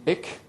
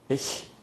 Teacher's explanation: k in Low German / Dutch is a plosive, but in High German it is a fricative ch, ich.